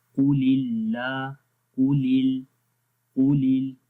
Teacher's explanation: پہلے قاف موٹا پڑھیں گے آگے باریک.